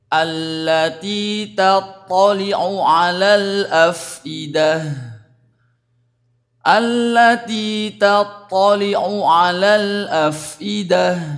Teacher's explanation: jangan sampai samar karena ada 2 huruf ain yang berdekatan atau jejer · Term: huruf ain ketemu ain